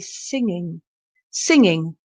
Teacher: the g at the end is soft you hardly say it